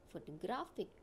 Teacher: the first two syllables are weak and the third syllable is strong. That's why I have given the stress on this third syllable.